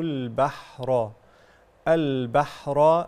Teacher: اللام هنا قمريه مظهره